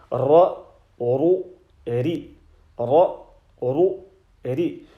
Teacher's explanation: The edge of the tongue touches the immediate top edge of the gums of the upper central incisors and the upper lateral incisors. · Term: r sound